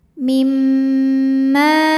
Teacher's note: Cara bacanya dengung. Jadi bunyi m kita tahan kurang lebih dua harakat. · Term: ghunnah musyaddadah, gunnah musyaddadah